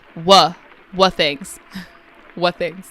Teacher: So here he cuts off the t.